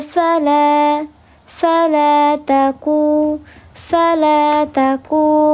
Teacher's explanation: fala taku mad thabi'i juga dibaca panjang dua harakat